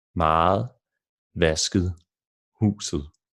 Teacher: And in the combination with the letters E, so ET, the ET ending at the end of words, it becomes a soft D